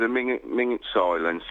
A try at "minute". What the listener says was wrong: There was a minging silence? A minute? You're saying ming it.